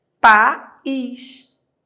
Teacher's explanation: o A se separa do I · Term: hiato